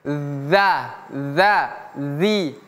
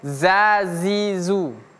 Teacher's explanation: Jadi ujung lidah bertemu gigi seri atas. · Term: huruf dzal